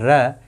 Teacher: ठीक है, ये जो अक्षर होते हैं ट वर्ग में, और एक अक्षर है र, ये र भी मूर्धा से बोला जाएगा